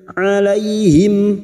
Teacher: fathah bertemu ya sukun kita lunakkan huruf lin. Alaihim huruf ain jangan samakan dengan hamzah.